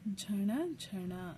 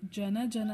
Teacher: ನಾಲಿಗೆನ ಮಡಚಿ ಹೇಳಿದೀವಿ ಜನ ಜನ ಅಂತ ಹೇಳಿಲ್ಲ ಜನ ಜನ ಅಂತ ಸೋ ನಾಲಿಗೆ ಮಡಚಿ ಹೇಳಿದಾಗ ಈ ಣ ಅಕ್ಷರ ಬರೀಬೇಕು